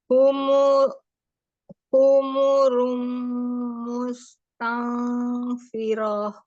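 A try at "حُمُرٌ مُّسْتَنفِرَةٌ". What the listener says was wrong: Firah mustafirah. Firah pendek.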